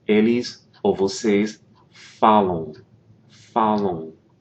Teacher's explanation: An important thing to point out with these, for example, the vocês or eles, elas form, you'll notice that it ends in an M, A-M. That M is not really pronounced. What that indicates is that the vowel that precedes it, in this case the A, is nasalized.